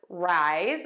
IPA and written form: raɪz (rise)